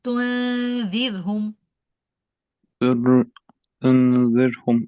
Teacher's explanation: So from the ta dhamma, go straight to the articulation point of dal. And so I'm literally going from tu to the dal, but I'm doing the ghunna at it.